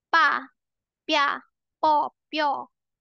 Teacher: B, magiging P sound, okay? P lang siya. Walang hangin din, matigas din siya.